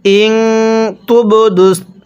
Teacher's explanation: বাটা ধাক্কা দিয়ে পড়তে হবে, কারণ বাটা কলকলার হরফ